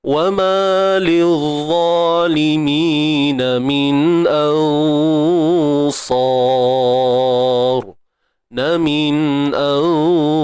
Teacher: makhraj bagi huruf sa' ni hujung lidah berada di belakang gigi sebelah bawah. Belakang gigi sebelah bawah. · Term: makhraj sa'